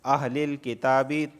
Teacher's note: تا کو اس وجہ سے کھینچ رہا ہوں کیونکہ اس پر کھڑا زبر آیا ہے